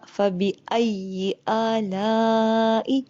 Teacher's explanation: آلا کے اوپر لمبی مد ہے، الف کے اوپر کھڑا زبر ہے. جو آ ہے وہ 2 سیکنڈ لمبا ہوگا، اور جو لا ہے اس کو ہم 4 یا 5 سیکنڈ لمبا کریں گے.